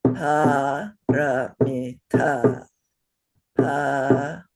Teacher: the last is long. Yeah, the two middle are short